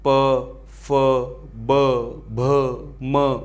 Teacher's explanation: दोनों होठों के स्पर्श से बोले जाने वाले वर्ण आपके ओष्ठ्य व्यंजन में आते हैं